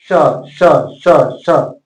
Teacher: तालव्य स बोलेंगे तो तालु से बोलेंगे, आपका जीव तालु में सटना चाहिए